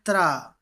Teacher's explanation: त्रा की बात करूं तो इसमें हमें ता मिलता है, उसके बाद रा मिलता है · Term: मिश्रित व्यंजन